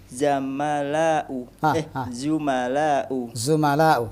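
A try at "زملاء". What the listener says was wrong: Dari kalimat zamil. Zamil jamaknya zumala'u.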